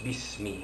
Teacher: Jadi bismi itu dia terus tidak perlu dibaca bi-ismi, terus bismi. Dia ada dua kalimah, bi dan ismi, jadi dia terus sambung saja, wasal di situ, jadi dibaca bismi.